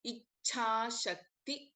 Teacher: सो इन इच्छा there is अल्प प्राणा च एस वेल एस महाप्राण छ · in Ichha, there is Alpa Prana Cha as well as Mahaprana Cha.